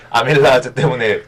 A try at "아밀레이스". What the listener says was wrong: 아밀라제 요즘은 아밀레이스라고 부릅니다. 아밀라제는 독일식 발음인데 혹시 늙으셨습니까?